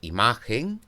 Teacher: en la palabra imagen tengo tres sílabas y es la segunda de ellas la sílaba tónica